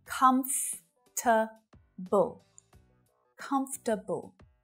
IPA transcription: 'kʌmf - tə - bəl